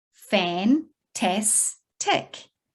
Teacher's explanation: all three are closed syllables fan tas tick you can hear a short vowel sound